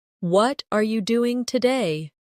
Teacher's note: The stress usually falls on what and doing.